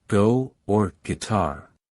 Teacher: Start with the sound of the letter G, as in go or guitar. It is a voiced velar consonant.